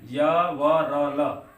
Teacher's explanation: य व र ल का अंतस्थ जो व्यंजन है उनका जो आभ्यंतर प्रयत्न है वह क्या हो जाता है, ईषत् स्पृष्ट हो जाता है